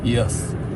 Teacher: Consonant y is also a glide or semi-vowel. This sound is produced by raising the middle of the tongue close to the roof of the mouth, approaching the position of the vowel E, but without fully pronunciation it of vowel Y often sounds like the Y in the word yes.